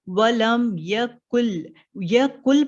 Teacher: काफ लाम से मिला देते हैं हम लोग, नून को ड्रॉप कर देते हैं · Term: विदाउट गुन्ना